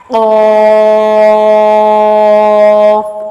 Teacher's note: قاف بھی پر حروف ہے، یہ بھی موٹا کر کے پڑھا جائے گا۔